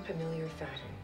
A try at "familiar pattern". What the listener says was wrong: You mean familiar pattern? No, you said familiar pattern, backwards.